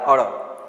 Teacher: અળ તમે બોલો તો જીભ તાળવે અડે અને નીચે પછડાતી હોય છે. જીભ પેઢા કે તેની ઉપરના ભાગની નજીક જઈ તરત જ નીચે પછડાય છે. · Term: થડકારવાળું વ્યંજન